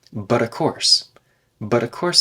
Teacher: the T in but should be tapped